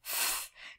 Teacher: your teeth come close to your bottom lip and what we can hear is the air friction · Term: fricatives